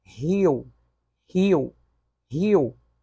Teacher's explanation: Há uma pausa entre o i e o o. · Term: hiato